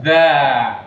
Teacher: Ujung lidah ketemu ujung gigi di atas.